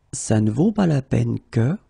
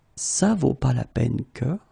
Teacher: it's possible not to pronounce the negative parts